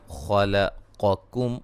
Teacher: خا کو موٹا، قاف کو موٹا، کاف کو باریک ، ٹھیک ہے، یہ کاف باریک ہے اور قاف یہ موٹا